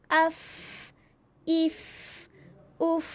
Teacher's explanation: Sebab itu masa sukun, masa mati, kita kembali kepada bunyi dia ataupun yang gigi tadi tu. Gigi sentuh perut bibir bawah. Tetap bunyi F